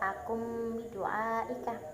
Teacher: Kemudian terdapat juga hukum bacaan iklab, yaitu pada kalimat akun bidu'aika, karena ada nun sukun yang bertemu ba sehingga dibaca akum bidu'aika